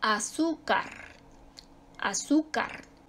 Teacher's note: Su sílaba tónica está en la penúltima, termina en una que no es ni N ni S, termina en R, y por lo tanto se acentúa.